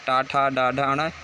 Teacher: ये सब मूर्धा से उच्चारित वर्ण है और ये सब स्पर्श व्यंजन है।